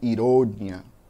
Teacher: A diferença de uma palavra e outra está na sílaba tônica, do português e do espanhol. No espanhol eu digo ironia, com a sílaba mais forte lá no final.